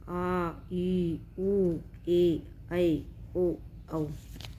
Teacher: इन स्वरों के उच्चारण में हर्षव स्वर की तुलना में लगभग दुगुना समय लगता है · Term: दीर्घ स्वर